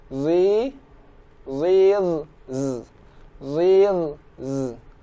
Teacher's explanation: Di sini huruf za berharokat kasroh, berarti dimulai dari rahang tebal.